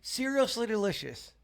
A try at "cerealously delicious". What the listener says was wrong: I think you said seriously. Seriously.